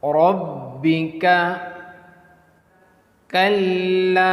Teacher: So pronounce the Kaf with thin light sound.